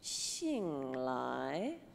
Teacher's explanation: It's like we're in an elevator. We're going down. And then we go up again, like halfway through the xing.